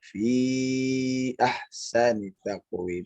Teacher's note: Fi ahsani itu masuk ke mad jaiz munfasil. Jadi 4 harokat.